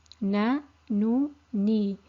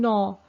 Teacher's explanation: the Noon is a thin letter, so there's no concaving of the tongue, there's no echo sound in the mouth, and there's no narrowing in the throat